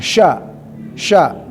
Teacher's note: huruf tafasyi huruf yang selalu menghamburkan nafas